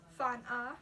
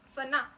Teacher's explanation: they're going to start to drop the N to make it more easy to say